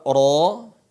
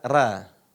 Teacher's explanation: dibaca ro dan bukan dibaca Ra tapi dibaca apa Ro nah bacaan yang mengarah ke huruf o itu disebut dengan tafkhim ya dibaca dengan ta tafkhim dibaca yang tebal ro Bukan dibaca